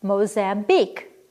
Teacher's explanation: two unstressed followed by a stressed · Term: Anapest